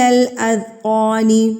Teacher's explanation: قاف کو ہم پر کر کے پڑھیں گے کیونکہ قاف حروف مستعلیہ میں سے